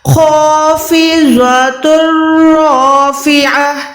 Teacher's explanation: خافضۃ رافعہ، same طریقے سے یہاں پر دیکھیں را کے اوپر زبر ہے تو یہ را موٹی ہے، را کے بعد والا الف بھی لازماً موٹا پڑھا جائے گا